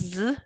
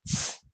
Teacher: with the aspiration, it's not pronounced Z, it's ts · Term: aspirated version